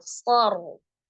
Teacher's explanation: Basar ro-nya disukunkan karena waqaf ya. Sebelumnya ada huruf shad dibaca tebal dan berharakat fathah maka ro-nya juga tebal.